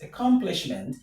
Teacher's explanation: The stress is on com. Com.